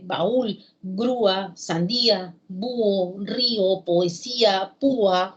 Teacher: secuencias de vocales en las cuales la cerrada es más fuerte y se separa de la otra vocal